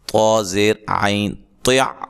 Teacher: یہ طا موٹے حروف میں سے، اس کو موٹا کر کے ادا کرنا ہے